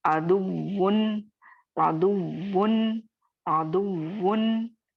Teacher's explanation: वाव पे नब्र हो रहा है, वाव मुशद्दद होने की वजह से